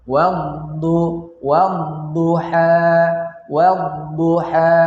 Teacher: Cara membacanya yaitu langsung masuk kepada huruf dad tanpa membaca alif dan lam tersebut. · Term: alif lam asy-syamsiyah